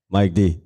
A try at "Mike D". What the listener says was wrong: It sounded like you said Mike Deep.